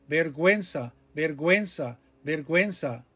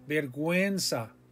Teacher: we have another diphthong there the u and the e it glides